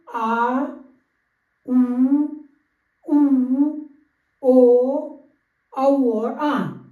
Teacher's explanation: और पश्च स्वर जीभ के पिछले हिस्से से जो बोले जाते हैं उनको कहते हैं पश्च स्वर।